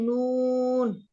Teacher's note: জিহ্বার আগা তার উপরের তালুর সঙ্গে লাগিয়ে